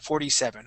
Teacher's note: I switch that t to a d sound